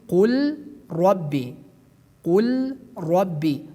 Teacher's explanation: The sixth rule regarding idgham portion is that we do idgham the letter lam, which is sakin, to ra